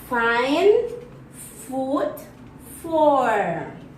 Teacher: Place of articulation is labiodental. According to manner of articulation is fricative. Make a little friction.